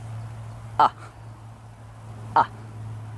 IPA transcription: ə